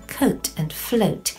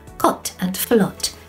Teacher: In Japanese and Spanish, there's no long O as in coat and float. So they would pronounce it cot and flot.